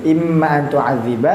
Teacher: sama-sama panjang lima harakat dan sama-sama termasuk mad jaiz munfasil